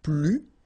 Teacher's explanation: you don't pronounce the S